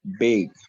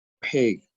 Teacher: B is a voiced sound, whereas P is just produced by the puff of air. Also, B is pronounced with less air released than P.